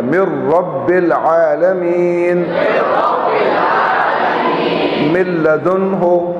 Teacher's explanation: دیکھیں اس میں من رب تھا اور من لدن تھا، لیکن ادغام ہو گیا تو نون کی آواز ختم ہو گئی، ٹھیک ہے؟ لام اور رے میں نون کی آواز بالکل ختم ہو جاتی ہے